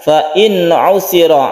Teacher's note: Di sini ada nun mati bertemu dengan ain, kita sebut dengan idhar halqi. Kita pendekkan, harus jelas, harus terang nunnya.